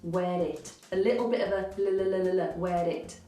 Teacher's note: you can hear just a hint of a tapped r linking the where to the it